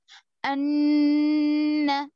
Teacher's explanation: गुन्ना यानी छुपेगी आवाज सिर्फ, सॉरी गुन्ना यानी रुकेगी आवाज सिर्फ, अन यहाँ नून पढ़ रहे हैं ना हम, जी हो नून छुप नहीं रहा है, नून सिर्फ रुक रहा है नाक में थोड़ी देर के